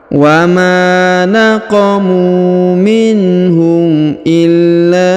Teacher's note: bertasdid maka kita tahan dan kita tekan ya illa ya kemudian kita leburkan huruf nun sukunnya masuk ke huruf ya Yang bertasdid ini ya kita leburkan masuk ke sini tanpa kita baca lagi